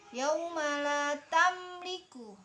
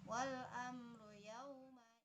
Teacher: Yauma la tamliku mim mati bertemu dengan huruf lam. Mim matinya dibaca jelas, izhar syafawi. Wal amru juga mim mati bertemu dengan huruf ro.